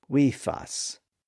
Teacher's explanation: you have a voiced E followed by a voiceless F followed by a voiced A, weefus. So in that environment, it was natural to just let the vocal folds vibrate all the way through.